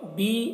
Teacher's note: یا مدہ ہے، ایک الف کے برابر کھینچ کر پڑھیں گے